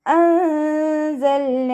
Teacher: അൻസൽന നൂൻ സാക്കിനയ്ക്ക് ശേഷം ഇഖ്ഫാഇൻ്റെ ലെറ്ററായിട്ടുള്ള സായാണ് വന്നിട്ടുള്ളത്. നൂൻ സാക്കിനയെ മറച്ച് വെച്ചിട്ട് മണിച്ചോതി കൊടുക്കുക. ലാമ് കൽക്കല ലെറ്റർ അല്ലാത്തത് കൊണ്ട് ഹാഫ് സുക്കൂന് കൊടുക്കാൻ ശ്രദ്ധിക്കുക കേട്ടോ.